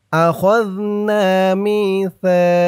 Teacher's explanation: এই জাল আর এই সা এই দুইটা অক্ষর কিন্তু মুখের জিহ্বার মাথা উপরের দাঁতের মাথার সাথে লাগবে এই দুইটা অক্ষর উচ্চারণ করার সময় মুখের এক জায়গা থেকেই এই দুইটা অক্ষর উচ্চারণ হবে আখাযনা মিসা একদম নরম হবে।